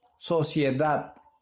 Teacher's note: Sociedad. La mayor fuerza de voz está en la última sílaba.